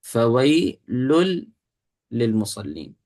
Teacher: ادغام جو ہے بتا دیتا آپ کو کہ نون گیا، نون نہیں آئے گا درمیان میں، اس کا مطلب ہے لام لام میں داخل ہو چکا ہے